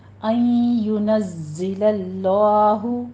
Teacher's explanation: نون ساکن کا قاعدہ ادغام مع الغنہ کریں گے اور نزی زائے کے اوپر سیٹی کی آواز کے ساتھ ذرا قوی آواز کے ساتھ زا کی کسرہ ادا کریں گے